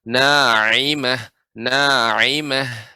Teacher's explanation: huruf ha dan ain ini di huruf tengah, sehingga butuh ada sedikit penekanan ya pada tenggorokan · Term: huruf ain